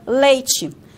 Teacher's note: Aqui no norte do Paraná, nós usamos a africada, o tchá, porque nós produzimos esse som seguido de I. E não seguido de E, senão nós falaríamos leite e não leite, ok?